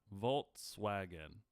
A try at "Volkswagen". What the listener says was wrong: With a T? It's definitely not with a T, and